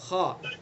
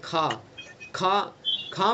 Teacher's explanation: مثلا خا ہے، خا، ہمیں خا کا مخرج بھی معلوم ہوگا اور اس کی صفات بھی معلوم ہوں گی کہ اس کی صفت کیا ہے، بلندی، اس کو پر کرنا اس کی صفت ہے